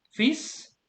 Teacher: I don't pronounce the L. L is silent there.